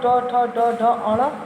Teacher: ट वर्ग, ट ठ ड ढ अण, मूर्धा से बोलते हैं